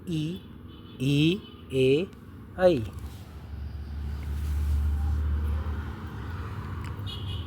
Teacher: जिन स्वरों के उच्चारण में जीभ का अग्र अगला भाग ऊपर उठता है उन्हें अग्र स्वर कहते हैं।